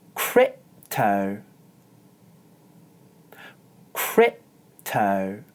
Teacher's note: instead of making a /p/ sound I do a glottal stop and then gently press my lips together before moving on to the next syllable